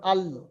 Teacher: জীবের সামনের আগা এবং ওই বর্মার উপরে যে দাঁতগুলো আছে মাড়ির যে দাঁতগুলো আছে দাঁতের আটটা দাঁতের গড়ার সঙ্গে লেগে উচ্চারিত হবে লাম।